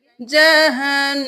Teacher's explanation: नून पे गुन्ना है, तशदीद है तो देर लगाएंगे